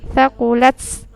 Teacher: huruf ta itu ketika dia sukun ada anginnya sedikit ya. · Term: tak sukun